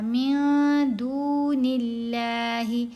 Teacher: جی، نون کے نیچے یہاں زیر ہے تو ہم نے لفظ اللہ میں لام کو باریک پڑھا